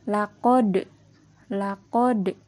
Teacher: ada huruf Dal yang berharkat sukun maka dibacanya harus di pantulkan